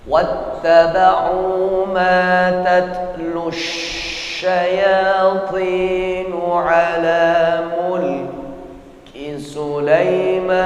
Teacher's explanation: Tekanan di dalam rongga mulut jelas sangat kuat pada saat menyebutkan huruf shin. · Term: tafasyi